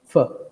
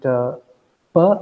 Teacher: fur is a continuant and per is a stop